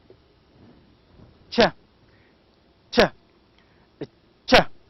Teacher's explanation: There is a stopping of the air stream, and there is also obstructed release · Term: Affricates